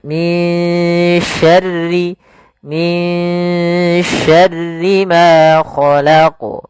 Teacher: Maka suara nun di sini kita samarkan kepada huruf syin. Maka min dengan tipis sinnya minyarri min syarri maa khalaq. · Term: bacaan ikhfa